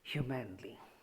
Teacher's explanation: we put the stress on the first syllable and do not stress second and third syllable. If we try to say humanly, see, hu is to be stressed, mom not to be, li not to be.